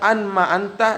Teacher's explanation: nun ketemu dengan mim, didgomkan